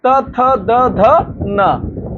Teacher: त थ द ध न अब इनका उच्चारण दंत आता है